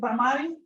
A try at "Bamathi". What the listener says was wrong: It's actually Bamathi. Bamathi. The accents on the first syllable. TH.